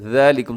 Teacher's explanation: थोड़ा सा ज़बान को दांतों के दरमियान लाइएगा तो सीटी ख़त्म हो जाएगी। ज़ालिकुम नरमी के साथ, बहुत ही हर्फ जो है नरमी से पढ़ा जाता है।